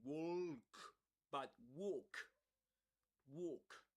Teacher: This L there is always silent.